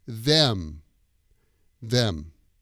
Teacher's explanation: your lips come together for the M sound when it's at the end of the word